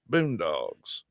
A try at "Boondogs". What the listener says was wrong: Boondogs. Dogs. You're saying dogs like woof woof.